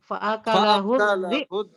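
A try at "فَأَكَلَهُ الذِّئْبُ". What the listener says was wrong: zi-nya agak tekan ya. Fa'akalahu dhi'b gitu. Dhi'b. Bukan hamzahnya yang ditekankan di sini, dhi, kasrohnya. Kalau dhib ya, kalau nggak ditekan rawan dhi'ab gitu kan. Nah, ini zal kasrohnya ditekan. Fa'akalahu dhi'b.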